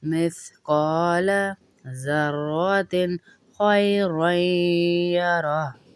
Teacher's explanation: तिन में गुन्ना नहीं करेंगे यहाँ पर, क्योंकि आगे हुरूफ़े हल्की का खा आ रहा है